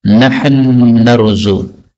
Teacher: Tapi kalau lanjut ya harus seperti biasa, syai'aw wa bil walidaini. Kemudian di sini nahnu narzuqu, nun ketemu nun. Nah ini boleh idgham. Maka nahnu narzuq.